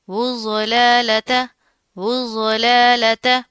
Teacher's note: ضاد کے اوپر تشدید آ رہی ہے، موٹا حروف ہے چونکہ، اور اس کو موٹا پڑھا جائے گا اور مضبوطی سے جما کر پڑھیں گے۔ اس واو کو ہم اس ضاد کے ساتھ ملا دیں گے، ٹھیک ہے۔